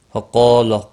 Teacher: فقال، قاف اور الف دونوں پر پڑے جائیں گے، قاف مستعلیہ ہے اور اس کے ساتھ میں الف بھی آیا ہے، یہ بھی پور پڑا جائے گا